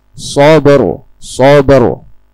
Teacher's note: Karena istilah asabri sebelum ro terakhir, yaitu ro sukun, huruf yang memiliki tanda sukun adalah huruf ba. Dan karena ba adalah salah satu huruf qalqalah, maka ro sukun dibaca seolah-olah didahului oleh harakat yang hidup